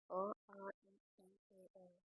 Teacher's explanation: आवृत्तिमुखी स्वर वे स्वर होते हैं जिनके उच्चारण में होंठ गोलाकार या वृत्तमुखी नहीं होते